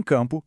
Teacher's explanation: Em campo, o AM representa um único som, um AM nasalado.